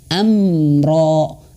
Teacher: Nah, amro, nah ini yang salah. Huruf mim ketika bertasydid jangan dilepas dulu bibirnya, baru ro. Nah, ketika melepaskan huruf ro berbarengan juga melepaskan dua bibir. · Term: huruf mim yang bertasydid